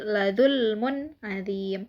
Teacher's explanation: huruf mim berharokat dhammah tanwin bertemu dengan huruf ain, yaitu dibaca jelas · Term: idhar